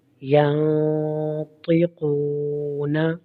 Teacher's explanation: قاف اور طا دونوں مستعلیہ حرف ہیں، ان کو ہم موٹا کر کے پڑھیں گے